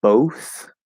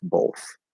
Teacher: sometimes it'll come out as both with an o sound and sometimes it'll come out as both with an l colored o sound so it'll be kind of like this both um both pronunciations